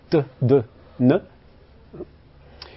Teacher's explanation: des dentales où l'apex, la pointe de la langue, tape derrière les dents